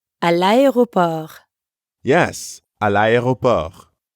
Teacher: Notice again how le and aéroport are connected in l'aéroport. That's because aéroport starts with a vowel.